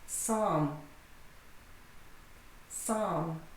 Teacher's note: The P is silent and the L.